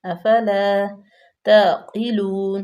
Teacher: قاف کو پر پڑھیں گے، واو مدہ، اور اس کے بعد ہو جائے گا وقف بالاسکان۔